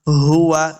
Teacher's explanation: ہا کو حلق کے نچلے والے حصے سے ادا کرنا ہے، اور واؤ کے اوپر اپنے دونوں ہونٹ گول ہوں گے، تب واؤ کا مخرج سے ادا ہوگا۔